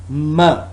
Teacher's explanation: it's voiced bilabial nasal sound